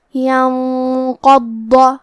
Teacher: قاف کو اور حرف الضاد کو دونوں کو تفخیم سے مطلب موٹی آواز میں پڑھیں گے، اور حرف الضاد کو 2 حرف کے برابر پڑھیں گے کیونکہ اس پہ تشدید ہے۔